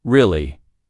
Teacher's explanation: For example, when you ask a question like "really," your voice goes up slightly at the end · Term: rising tone